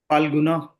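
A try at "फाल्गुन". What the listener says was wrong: Falguna, no. There's no Ana. Phal. Say Falguna. Not Fal. Not F. Pha. There's a difference between Pha and Pha. So F is English, right? So we say Pha, like flower. But in Hindi or Sanskrit, it has to be Pha. Pha. So it's Phalgun.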